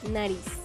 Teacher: N. Nasal, alveolar, sonora.